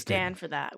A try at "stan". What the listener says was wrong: But we stan, not stand.